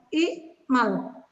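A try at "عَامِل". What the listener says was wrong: Enggak. Huruf pertamanya dipanjangin, Bu, kalau isim fa'il itu.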